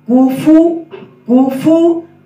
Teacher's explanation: آگے فا کا جو مخرج ہے، فا میں پیش تو ہے فا میں، لیکن فا کو پڑھتے وقت اوپر والے دان نیچے والے ہونٹوں کے ساتھ لگیں گے. کاف پیش کو، و فا پیش فو، کوفو کوفو.